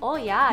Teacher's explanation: if you're from north dakota you've got some long o's